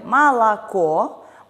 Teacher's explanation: в слове молоко у нас безударные о подвергаются редукции и произносятся как звук а